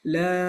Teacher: And this mim basically is a sukoon. So there's a long vowel followed by sukoon, so we need to make it 6 harakat long